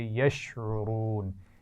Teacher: عین کے مخرج کا خیال رکھیے، واو کو موٹا پڑھنا ہے اور واو مدہ کے ساتھ پڑھیں گے